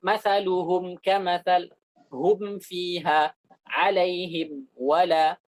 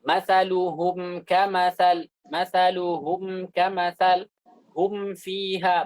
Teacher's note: maka mim itu diizharkan tanpa gunnah tambahan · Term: izharu syafawi